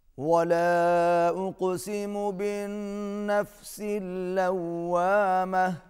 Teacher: ولا کے اوپر بھی چھوٹی مد ہے، کھینچ کے پڑھیں گے، اقسم، قاف پر قلقلہ ہوگا، بالنفس اللوامہ، نون مشدد ہے، غنہ ہوگا، باز ناک میں جائے گی۔ لوامہ، یہاں پر واو پر ہونٹ گول ہوں گے